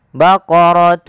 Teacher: samarkan suara tanwinnya kepada huruf Shad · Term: Ikhfa